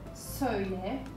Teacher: Söyle is ending with a front vowel.